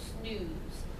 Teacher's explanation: snooze neither s or n are normally lip round positions but because you're getting ready to say the oo sound you round your lips in anticipation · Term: anticipatory